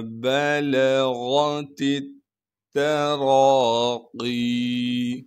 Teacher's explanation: با کو بغیر کھینچے پڑھیں گے، لام کو بھی بغیر کھینچے پڑھنا ہے۔ غین کو موٹا کر کے پڑھیں گے کیونکہ غین موٹے حروف